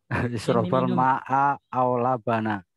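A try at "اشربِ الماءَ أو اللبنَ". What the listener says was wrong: Ya, isrob al-ma'a bukan isroba ya. Isrob atau kalau mau disambung isrobi. Isrobil ma'a awil labana.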